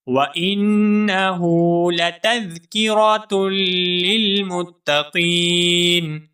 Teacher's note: حمزہ کے بعد نون مشدد ہے، نون مشدد کے اوپر غنہ ہوگا